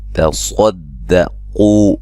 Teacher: تصدقوا صاد اور قاف کو موٹا باقی باریک ہے